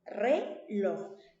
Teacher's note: Perfecto. Entonces, reloj es una palabra aguda, ¿sí? Porque tiene la mayor fuerza de voz en la última sílaba.